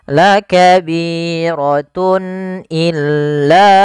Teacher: Kemudian pada lafal tun illa, di sini ada izhar halqi, yaitu suara tanwinnya harus dibaca dengan jelas karena ketemu dengan huruf hamzah